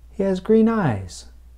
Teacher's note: Once again, the stress is on the noun, eyes. There is less stress on green.